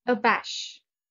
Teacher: The stress is on the second syllable, abash. It means to make another feel ashamed, embarrassed, or humiliated.